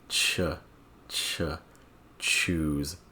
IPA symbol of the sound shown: tʃ